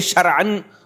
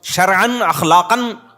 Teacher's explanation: تو پھر پورے حلق سے عین نکلے گا